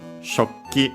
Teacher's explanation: the u most likely fell because, simply we had a double k. It often happens when we have a final ku or ki, usually ku actually, then followed by another k, or in general, usually when followed by another k, but we'll see that again with other practical examples.